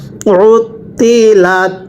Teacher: আইনটা উচ্চারণের সময় গলার মধ্যে চাপ দিয়ে পড়তে হবে